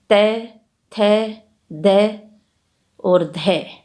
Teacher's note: दंत व्यंजन त, थ, द और ध दंत व्यंजन है जो जीभ की ऊपर की नोक के द्वारा ऊपर के दांतों का स्पर्श करने से उच्चारित होते हैं।